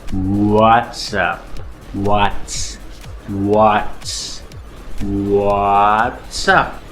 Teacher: you round your lips because you're making a W sound